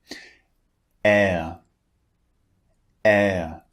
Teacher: this vowel is two vowels squeezed together so the shape of the mouth changes slightly in the middle of the sound